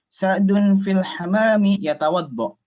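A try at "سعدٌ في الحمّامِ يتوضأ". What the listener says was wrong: Afwan, ini hammam ada tasdid hammam.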